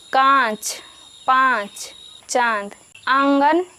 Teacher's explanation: अनुनासिक वाले शब्दों के उच्चारण में हवा नाक और मुंह दोनों से बाहर निकलती है